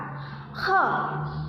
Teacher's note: Kha pengucapannya keluar dari ujung tenggorokan. Kha, tenggorokan paling bawah. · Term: huruf kha